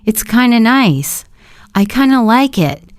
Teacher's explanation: If you notice, the of disappears when you say it fast.